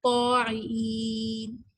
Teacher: طاعین, طا جب ہم کہتے ہیں تو ہمارا طا ادا کرنے سے زبان کی جو بیک ہے وہ اوپر کے تالو کو جا کے ٹچ ہوتی ہے, اس کو استعلاء کہتے ہیں, ٹھیک ہے. اور الف کی وجہ سے یہ سننے میں زیادہ ہیوی فیل ہوتا ہے, مفخم فیل ہوتا ہے